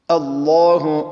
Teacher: دا لام اسم الجلالة ما قبل مفتوح دي مفخم